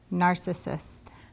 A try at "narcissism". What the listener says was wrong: Very close. What is this ending?